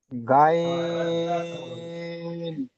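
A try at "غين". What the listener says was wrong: জি, আপনি মুখটা ফাঁক করে গা কেন বললেন? ওটিতে স্টার চিহ্ন দেওয়া আছে, গ পড়তে হবে মুখ গোল করে।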